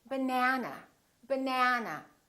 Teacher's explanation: this second syllable is stressed that means this vowel is going to be much longer repeat banana banana so the air is gonna be prolonged let's